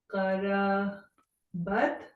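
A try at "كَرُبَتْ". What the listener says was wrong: Karubat. Yeah, that Dumma on Ra does not change. Will stay as it is. Why you are changing Ru to Ra?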